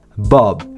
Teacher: Si vous visez un accent britannique, la principale différence sera au niveau du prénom parce que les lèvres seront arrondies pour la voyelle